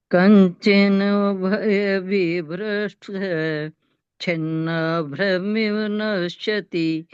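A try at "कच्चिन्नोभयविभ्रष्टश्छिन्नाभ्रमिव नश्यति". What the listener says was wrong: ये कंचिन्नो नहीं है, क पर बिंदी नहीं है। कच्चिन्नो भय विभ्रष्ट।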